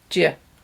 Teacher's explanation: Do you are linked together, and in weak pronunciation become j.